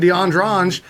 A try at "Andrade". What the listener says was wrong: Andrade. Where do you get the G?